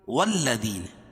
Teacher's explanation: واو کو لام میں ملائیں گے سختی کے ساتھ کیونکہ لام کے اوپر تشدید ہے. ذی یا ساکن سے پہلے زیر ہے یا مدہ.